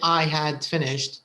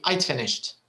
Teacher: a very light d sound and very often it's actually contracted they usually contract it so they don't say i had finished they just say i'd finished